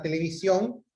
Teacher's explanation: Entonces, ejemplo de sílabas tónicas, tenemos por la palabra televisión, en este caso la última sílaba es la mayor fuerza de voz